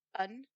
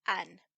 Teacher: the plural ending will be pronounced with a schwa, un, whereas the diminutive ending is always pronounced with a higher vowel, so an.